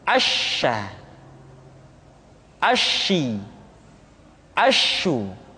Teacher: sifat atafasyi yaitu menyebarnya angin di dalam mulut kita